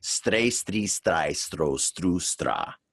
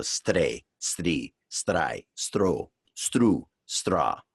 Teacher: Now we're tapping the R like the Japanese do with the letter R.